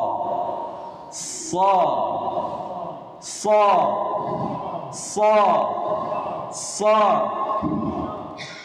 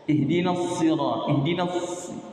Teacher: Adapun menurut istilah, safir itu adalah tajamnya suara karena ia keluar dari celah yang sempit antara ujung lidah dengan dua gigi seri atas dan bawah